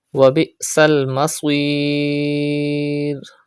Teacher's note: Pronounce hamza sakin with sudden pause and stretch madde ariz at the end of this word. Madde ariz is done when a temporary sukoon comes after any madda letter.